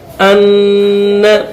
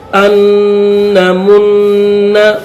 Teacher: حمزہ نون نون زبر ان نون زبر نہ ان، اس نون کو پھر نہیں پڑھیں گے، اس نون کو اس نون کے ساتھ دوسرے نون کے ساتھ ملا دیا جائے گا. ان، صرف ایک نون کی آواز آنی چاہیے اور نکالنی ہے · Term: ادغام